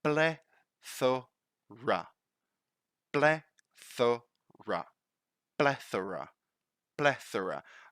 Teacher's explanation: so that would be the voiceless th